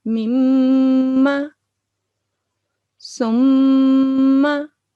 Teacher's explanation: we have to press meme for 2 seconds and then leave, and it's a nasal sound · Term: gunna